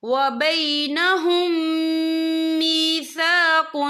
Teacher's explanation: یہاں میم ساکن ہے، میم ساکن کے بعد جو ہے میم مشدد والا حروف آ رہا ہے، تو یہاں پر ادغام شفوی ہوگا. ہم پچھلے میم کو اگلے میم میں مدغم کریں گے اور ہم یہاں غنہ بھی کریں گے.